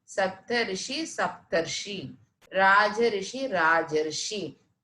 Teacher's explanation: यानी आ के बाद यदि री आए तो उसका परिवर्तन आर में होता है।